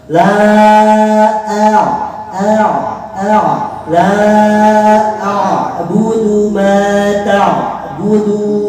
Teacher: huruf ain itu ada sifat tawasud, ada sifat tawasud. Pastikan ada suara kalian dikit.